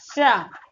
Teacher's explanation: तो आपकी जो जीवा है जाके मसूड़े से होती है, तो इसका जो उच्चारण स्थान होता है वर्तस्य होता है